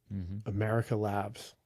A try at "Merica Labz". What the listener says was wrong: America. Yeah, there's no A.